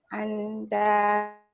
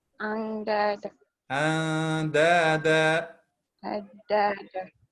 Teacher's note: Okay, don't pronounce the noon. أندادا. This is ikhfa. We have to hide the noon.